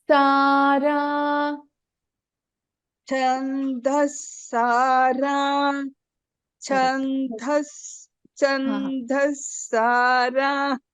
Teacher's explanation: You're chanting that correctly, but you're putting more effort on this da. Don't put effort on this da. This is Alpa Prana.